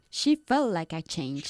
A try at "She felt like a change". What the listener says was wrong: Pronounce the T a bit more strongly there.